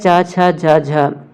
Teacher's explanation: यह है च छ ज झ इसे हम कहेंगे च वर्ग च वर्ग का उच्चारण स्थान तालु से होता है